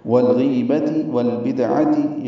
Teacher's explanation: دال ساکن پہ قلقلہ